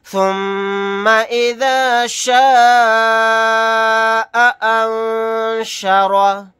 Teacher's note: نون ساکن کے بعد شین آ گیا، یہاں پر اخفا کر کے پڑھیں گے۔